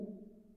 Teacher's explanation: अ तुम्ही उच्चार करून पहा, अ आणि उ. उ ज्यावेळेस उच्चार होतो त्यावेळेस आपल्या ओठांचा एक चमूसारखा आकार होतो, बरोबर. म्हणजे तसा केल्यानंतर उ बाहेर पडतो.